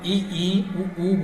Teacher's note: संव्रत क्या होते हैं, मुख लगभग बंद होता है मुख द्वार। तो ई, ऊ बोलेंगे तो मुख आपका लगभग बंद ही होगा